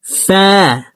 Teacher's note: উপরের দাঁত নিচের ঠোটের পেটের সঙ্গে লাগিয়ে ফা হরফকে উচ্চারণ করব